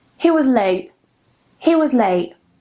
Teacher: Here we have a vowel a and then t I can change that to a glottle stop. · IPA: ʔ